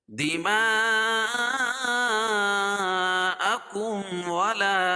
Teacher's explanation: اس لیے کہ حروف مدہ کے بعد حمزہ اسی کلمے میں تو مد متصل ہوتا ہے اور اس میں توسط اور طول ہے، یعنی 3 الف اور 5 الف تک اس کو کھینچ کے پڑھ سکتے ہیں